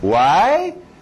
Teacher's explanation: Why sempre vai subir. É sempre usado para fazer pergunta.